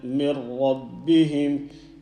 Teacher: You've got a noon sakin and letter ra after it. This ra, the ra with the shadda is telling you and me that we need to join the noon with the ra